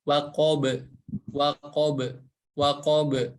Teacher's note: harus dipantulkan karena memiliki sifat qalqalah, waqab. Dan huruf ba ini huruf yang tipis ya, Jadi pantulan suaranya lebih ke waqob, waqob, waqob.